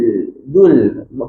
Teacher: Bila sebut zul tu pangkal lidah turun. Kita nak nipis. Kalau tak nanti nanti jadi nanti jadi zul.